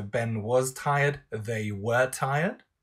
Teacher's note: there's a falling intonation on the whole construct